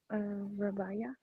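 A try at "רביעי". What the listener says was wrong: Okay, very close. Very close. So it would be Rabah, and then like the ya and the I would join together. It would be like Rabah ya ya. But you'd say Rabba Yaya, right?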